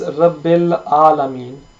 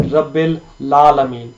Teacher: We need to have a separation between the lam and the following letters